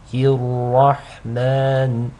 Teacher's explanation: The ra is heavy because it takes a fatha.